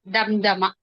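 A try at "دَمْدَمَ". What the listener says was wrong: ఇక్కడ మనం దీర్ఘం అస్సలు తీయకూడదు. స్పష్టంగా త్వరగా చదవాలి.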